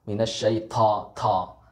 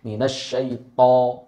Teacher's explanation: huruf to ini sifatnya adalah huruf itbaq. Ya, huruf isti'ala. Ya, tebal. Ya, ketika dilafalkan itu seperti mengangkat.